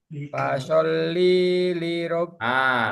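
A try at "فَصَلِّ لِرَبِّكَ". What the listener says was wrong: Linya keduanya panjangan. Fasoli li rob. Linya dua-duanya sama ya. Fasoli li rob.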